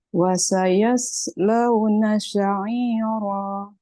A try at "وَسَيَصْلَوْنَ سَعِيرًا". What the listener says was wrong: Sin. Jangan sya. Wasayaslawna jangan sya.